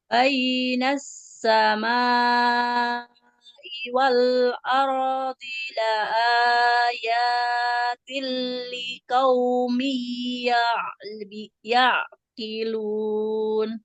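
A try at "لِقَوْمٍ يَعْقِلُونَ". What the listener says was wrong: Jangan likaum ya. Huruf kau nggak boleh dibacakan. Liqo, liqaumi ya'qilun.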